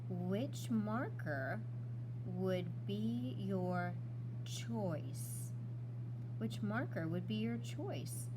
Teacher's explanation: I can make my voice go up to add that little inflection because I see a question